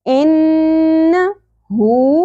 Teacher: ان نون مشدد غنہ ہوگا، آواز کو ناک میں ہولڈ کر کے رکھنا ہے تھوڑی دیر کے لیے. ان ہو ایک الف کے برابر.